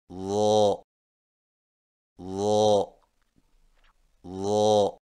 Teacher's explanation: ضا کی ادائیگی میں زبان کی نوک کو سامنے والے اوپر کے دو دانتوں کے اندرونی کناروں سے نرمی سے لگا کر اور زبان کے پچھلے حصے کو تالو کی طرف بلند کرتے ہوئے موٹی آواز میں پڑھیں، یعنی ضا ضا ضا.